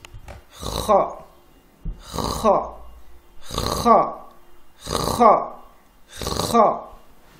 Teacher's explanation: cette lettre se prononce avec un grincement dans la gorge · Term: lettres emphatiques